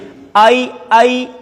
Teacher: اور عین، اس کو آپ ذرا گلے سے واضح کر کے نکالیں گے، آئی آئی، حمزہ کی آواز نہ ہو، آئی، واضح آواز نکالنی ہے، عین۔